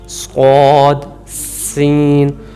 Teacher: سین اور صاد، یہ سیٹی کے ساتھ، یعنی کہ دانتوں کو آپس میں ملانے سے، صاد، سین۔ چلیں ان کی مثال دیکھتے ہیں جا کے ہم۔